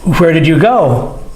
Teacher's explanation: Notice with the question, the voice goes up.